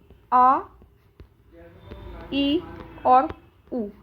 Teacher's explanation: एक ऐसा स्वर जिसके उच्चारण में हमें 2 मात्रा का समय लगे या फिर दीर्घ उच्चारण करना पड़े, दैट इज कॉल्ड दीर्घ स्वर।